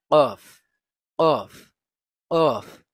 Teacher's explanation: কফ, কফ উচ্চারিত হয় জিহ্বার গুড়া তার বরাবর উপরে তালুর সঙ্গে লাগিয়ে। জিহ্বার গুড়া মানে ওই যে ভিতরের অংশ, ওইটা যখন উপরের তালুর সাথে লাগবে তখন তখন কফ উচ্চারিত হবে।